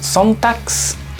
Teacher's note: G al final, recuerden que suena k, entonces sería Sonntags.